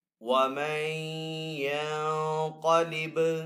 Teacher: نون ساکن کے اوپر اخفا والا غنہ بھی کریں گے، با حروف کلکلہ میں سے تو با کے اوپر کلکلہ کریں گے.